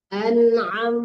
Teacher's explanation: An'am benar-benar dari tenggorokan ya, tengah-tengah tenggorokan keluar makharijul huruf ain. An'am kebanyakan ya ain kalau udah di tengah-tengah kalimat membacanya an'am.